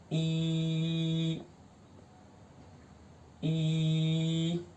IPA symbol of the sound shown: i: